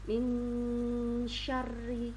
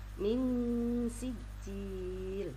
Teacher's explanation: Min syarri, ada nun sukunnya bertemu dengan shin, membacanya samar. Nun sukunnya dibaca jelas tapi ada dengungnya ketika masuk di huruf shin. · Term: ikhfa hakiki